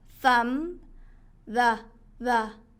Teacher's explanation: 번데기 발음이에요. 혀가 살짝 나왔다 들어가는